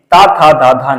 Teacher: त था द धा ना ये सब क्या है तो ये सब दंत से उच्चारित होते हैं